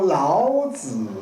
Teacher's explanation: 这是按照国语北京话的要求是这样读的，不能读一个轻声 ，这个轻声是普通话国语里面的一个特点，南方人一般没有，台湾